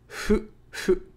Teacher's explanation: fu is halfway between the F and H sounds, plus u, making a fu sound. So it's not fu, it's not hu, it's fu, fu.